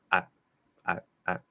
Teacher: Now we can cut the diphthong, where you don't say the I part at the end, because remember, I ends in I.